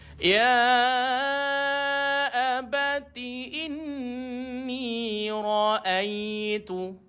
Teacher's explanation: wajib al-gunnah dia tak boleh tekan sekejap, dia kena lama sikit.